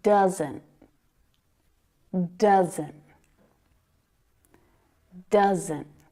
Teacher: you can hear that stopped T sound